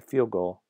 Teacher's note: if you say field goal you might drop the D because before consonant this is a very common phenomenon in varieties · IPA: /d/